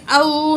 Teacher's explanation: او، واو ساکن، پچھلے الفاظ پہ زبر، واو لین ہے، جلدی سے پڑھیں گے